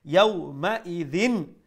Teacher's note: the tanween will be pronounced with izhar, with clarity. There will be no nasal sound.